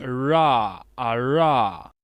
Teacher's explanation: que nós chamamos de R retroflexo ou seja ele vai ser um R bem forte com a língua bem jogada para trás